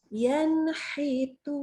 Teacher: Kalau nun sukun atau tanwin ketemu dengan huruf ha dan ha, maka dia hukumnya sama-sama nunnya dibaca jelas. Nunnya dibaca jelas. Ya, tidak tambah dengung lagi. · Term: idhar halqi